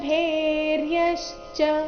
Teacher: ಇಲ್ಲಿ ಭೇ ಮಹಾಪ್ರಾಣ ದೀರ್ಘ ಚೆನ್ನಾಗಿ ಬರಬೇಕು